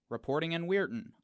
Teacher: the phonetics shows us a glottal stop